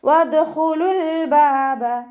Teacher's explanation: ഖ ഇസ്തിഅലാൻ്റെ ലെറ്ററാണ്, ഉയർത്തിയിട്ട് ഉച്ചരിക്കുക. ലാമ് കൽക്കലയുടെ ലെറ്ററിലാത്തത് കൊണ്ട് ഹാഫ് സുക്കൂന് കൊടുക്കുക. · ദാല് കൽക്കലയുടെ ലെറ്റർ ആയതുകൊണ്ട് ഫുൾ സുക്കൂന് കൊടുക്കുക. വദ്ഖുലുൽ ബാബ, ഖ ഇസ്തിഅലാൻ്റെ ലെറ്ററാണ്, ഉയർത്തിയിട്ട് ഉച്ചരിക്കുക.